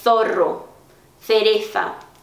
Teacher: na Espanha, como eu falei, o C seguido de I de E e o Z, letra Z, eles têm esse som tipo do TH do inglês, a língua entre os dentes